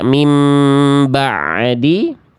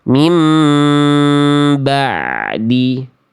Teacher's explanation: Bukan dibaca mim ba'di, tapi kita alirkan sedikit bunyi ain sukunnya